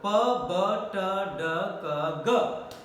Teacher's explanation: Air is coming out from the lungs and the obstruction is made either in the lips or in the teeth ridge or in the back of the hard palate or soft palate, by the back of the tongue, and they are totally blocked by these 2 articulators, totally blocked, and air is compressed. And then when sufficient air is there, then there is a sudden release, not slow release but sudden release. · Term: plosive consonant sounds